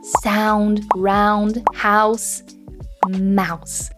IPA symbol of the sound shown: aʊ